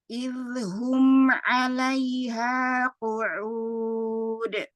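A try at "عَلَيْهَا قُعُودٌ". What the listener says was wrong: Oke, ini lebih bagus. Hanya di huruf ain ya untuk dilatih supaya lebih tipis lagi ya.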